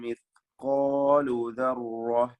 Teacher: ലാ യഅ്സുബു അൻഹു മിസ്ഖാലു ദർറ, വ്യക്തമായി അതിന്റെ മഖ്റജിൽ നിന്ന് ഉച്ചരിക്കുക. ഖാഫും അലിഫും തഫ്ഖീം ചെയ്ത് തടിപ്പിക്കേണ്ടതാണ്. മിസ്ഖാലു ദർറത്തിൻ, റായിനും തഫ്ഖീമാണ്.